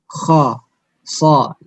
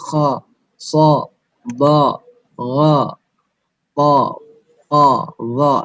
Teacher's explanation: lidah belakangnya terangkat, ya, ketika kita mengucapkan kha, so, ba, gha, ta, qa, dha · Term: al-isti'la